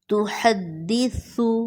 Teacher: یہاں سا میں سیٹی کی آواز نہ آئے